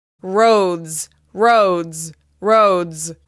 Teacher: the plural of road is roads, with the Z sound at the end.